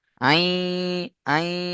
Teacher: নুন সাকিনকে ইয়ার সাথে মিলিয়ে একালিফ গুণনা করে পড়তে হবে। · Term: ইদগামে নাকিস